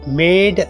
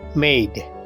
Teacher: இந்த சொல்லில் இருக்கின்ற ஏ, EI என்ற 2 உயிரெழுத்துக்களின் சேர்க்கையான ஒலியை கொடுக்கின்றது. அதாவது மேட் அல்ல, மெய்ட்.